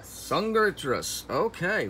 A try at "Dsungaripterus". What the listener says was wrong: The D is silent.